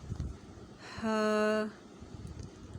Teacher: ہا، ہا کا مخرج یہ ہے کہ حلق کا وہ حصہ جو سینے کی طرف ہے وہاں سے ہا ادا ہوگا